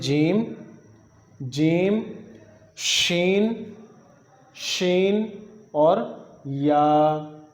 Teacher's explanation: یعنی زبان کے درمیان کا جو حصہ ہے وسط لسان اور اوپر کا تالو. یہاں سے جیم, شین اور یا, جیم شین اور یا ادا ہوتے ہیں.